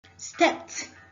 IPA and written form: stept (Stepped)